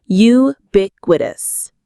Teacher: The stress is on the second syllable, bic, ubiquitous.